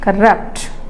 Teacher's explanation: next corrupt so in diic word when it is a verb then the stress is on the second syllable